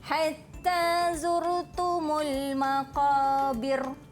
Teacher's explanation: Apabila berhenti, apabila huruf sebelumnya, sebelum jumpa huruf ra tu, dia berbaris kasrah. Jadi kalau sebelum ra yang waqaf ni dia berbaris kasrah, dia memang dibaca secara tarqiq. Ya, nipis sahaja.